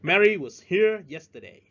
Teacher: Chúng ta thấy chữ was nghe rất là nhỏ, rất là yếu. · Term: weak beat